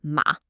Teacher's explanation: It's fast and it's decisive. It starts high and then it just drops quick. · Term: fourth tone